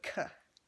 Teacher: It's basically like just the C, except it's like slightly aspirated is what they call it.